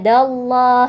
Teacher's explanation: lam jalalah pada lafaz Allah dibaca tebal · lam jalalah pada lafadz Allah, dibaca tebal atau tafkhim ya, karena didahului oleh harokat fathah da. Jadi bacanya dallah ya, dibaca tebal.